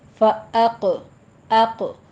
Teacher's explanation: حمزہ باریک رہے گا، حمزہ کو پر نہیں کہنا، اق، قوف پر کر دینا ہے، قوف کے پر قلقلہ بھی کرنا ہے، اور آگے را بھی مفخم ہے۔